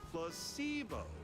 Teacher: The stress is on the middle syllable.